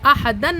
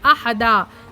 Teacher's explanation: وقف کا مطلب ہے رک جانا، ٹھہر جانا، ٹھیک ہے۔ دو زبر پر وقف کرنا ہو تو ایک زبر کے ساتھ الف پڑھا جاتا ہے، جیسے احدن سے احدا۔